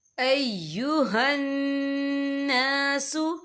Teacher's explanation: یہاں نون مشدد ہے تو یہاں پر غنہ بھی ہوگا